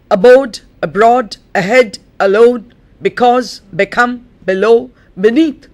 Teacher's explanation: you would notice that the accent is on the root and not on the prefix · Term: weak prefixes